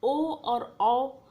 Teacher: ए आप इसमें देख रहे होंगे कि ये जो है वर्ण है हमारे गले से निकल रहा है, कंठ से निकल रहा है और तालु को भी छू करके निकल रहा है, तो इसलिए इसका नाम कंठ तालव्य वर्ण रखा गया है। ओ और औ ये हमारे गले से भी निकल रहा है और हमारे होंठ की जो संरचना होती है वो एक गोलाकार जैसी हो जाती है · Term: कंठोष्ठ